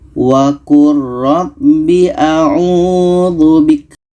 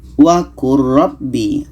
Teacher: Di sini ada lam bertemu ra, maka bunyi lam ini kita masukkan ke ra. Kita baca wa qur rabbi a'udzu bik. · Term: Lam masuk ke ra